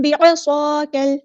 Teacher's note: ہے، بِعَصَاكَ، عین کو ہم نے مستحرک سے ادا کرنا ہے، صاد ہمارا ہیوی لیٹر ہے اور سیٹی بھی آنی چاہیے